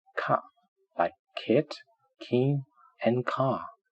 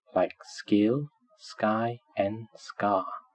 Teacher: Normally, it is ka, like kid, king, and car. But if it is preceded by s, it would become ga, like skill, sky, and scar.